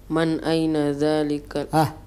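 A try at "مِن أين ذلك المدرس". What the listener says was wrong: man atau min?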